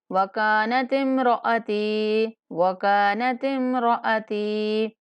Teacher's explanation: را کو پور کر کے پڑھیں گے اور تا کو بھی ایک الف کے برابر لمبا کریں گے